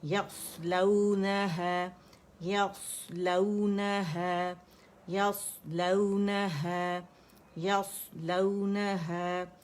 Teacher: الف مدہ مد طبیعی حرکتین, 2 کاؤنٹ کے لیے آواز اوپر جائیں گی